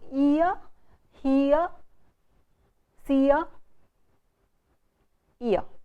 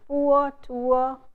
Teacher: 3 diphthongs ending with the vowel shwa